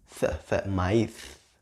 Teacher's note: in my Spanish accent, I place my tongue in between my teeth. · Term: th sound